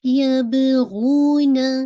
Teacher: ये आपका वाउ मदिया है, इसको आपने टू काउंट पढ़ना है और ना एक काउंट